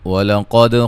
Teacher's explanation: قاف کو موٹا، دال پہ قلقلہ